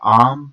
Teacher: back open unrounded vowel